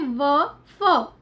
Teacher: ऊपर का दांत और नीचे का होठ · तो ये क्या, किन शब्दों को, व और फ, 2 शब्दों को बनाता है, व को और फ को, ठीक है। ऊपर का दांत और निचला होठ जो है वो हमारे 2 शब्दों को मिलकर बना रहा है। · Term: दंत ओष्ठ